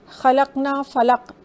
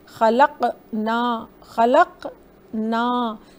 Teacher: چھوٹا سا ایک آ کا ساؤنڈ آئے گا قاف کے بعد